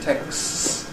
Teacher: You get a rather long /s/ at the end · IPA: /tekss/